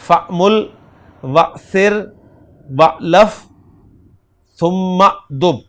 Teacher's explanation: جب پیچھے سے ملا کر پڑھا جاتا ہے تو حمزہ لکھنے میں رہ جاتا ہے، پڑھنے میں نہیں آتا. اور جو حمزہ اصلیہ اپنی جگہ برقرار رہے گا. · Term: حمزۃ الوصل